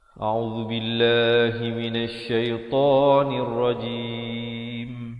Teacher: A'udzu di hujung lidah, billah lafzu jalalah dibaca nipis 2 harakat.